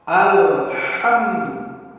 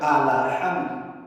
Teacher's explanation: Seperti kita membaca ha, jangan ditukar menjadi ha besar, akan merubah makna ayat yang kita baca. Kemudian membaca lam mati, jelaskan lam, jangan berbaris. Alhamdu, jelaskan alnya.